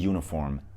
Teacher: Uniform kelimesi u ile yazılıyor ilk harf olarak ama ilk sesi y sesi